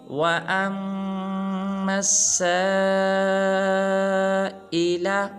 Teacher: میم کو آگے لام کے ساتھ نہیں ملانا، بلکہ لام کو تو پڑھنا بھی نہیں ہے، میم کو آگے سین مشدد کے ساتھ ملائیں گے، اور سین کے اوپر مد ہے لہٰذا سین کو لمبا کریں گے